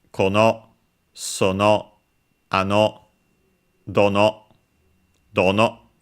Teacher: they're all unaccented except for the question ones, which are accented on the first one